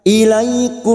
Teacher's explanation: fathah bertemu ya sukun Huruf layin kita lunakkan ilaikum mim sukun bertemu Nun Idhar syafawi mim sukun dibaca jelas